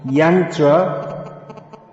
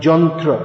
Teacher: the Ya in Sanskrit often becomes pronounced as Ja.